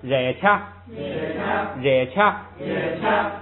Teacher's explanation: 卡谢涅康了太松，卡谢涅康了太松，卡谢特仓了太松，卡谢特仓了卡谢特仓了太松。这个我看呢，今天就到这儿，剩下的练习咱们那个下节课再来，是不是？你们上店是不是还能读一会儿吗？啊，可以啊，可以，咱们把下边练习来了啊。反正你是早晚是这点事儿，哎，早一点读，晚一点读，这个一样的啊。咱们读了啊，第一个咱们看啊，加辣，忍路，卡拉，他骂，皮意，曲地，哎，前边的卡不变音是科与曲，后边的曲要变成不送气，要变成这个的，哎，变成的就是对，哎，变成对，曲地，这是参瑞，拉个人，这是取却，取却，取却，取却，下边热恰，也恰，热恰，也恰， 本来这个热是升降调，热，但是前不降，所以它就变成升 ，就是热恰，也恰，热恰，也恰，哎，光升不降了。后边是孔僧，孔僧，孔僧，孔僧，仰包，仰包，仰包，仰包，这个是个新词儿，仰包是轻的，就是轻重的轻，仰就是轻，仰能